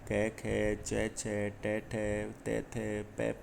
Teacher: अघोष यानी स्वर तंत्रियों में कंपन या गूंज उत्पन्न नहीं होती है।